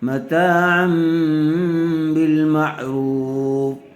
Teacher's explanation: ما لم تمسوهن او تفرضوا لهن فريضة ومتعوهن على الموسع قدره وعلى المقتر قدره متاعا بالمعروف متاعا بالمعروف اقلاب کا قاعدہ ہو رہا ہے. تنوین یا نون ساکن کے بعد با آ جائے تو تنوین یا نون ساکن کو میم سے بدل کر غنہ اور اخفا کے ساتھ پڑھیں گے.